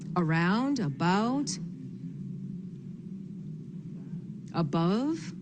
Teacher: words that have that A in the very beginning that sounds like uh